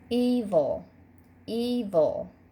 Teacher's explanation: If you put your hand under your chin, you can hear our accented syllable is definitely the first syllable, that E. Evil, evil.